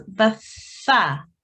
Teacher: Rather than a sa, try and say it like a th with a slight sort of s sound in it.